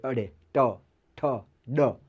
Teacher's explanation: મૂર્ધન્ય વ્યંજન બોલતા જીભ જે છે એ તાળવે અડે ટ ઠ ડ તાળવે અડે બરાબર એને મૃધન્ય વ્યંજન કહેવાય એટલે